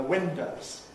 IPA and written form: ˈwɪndəʊz (windows)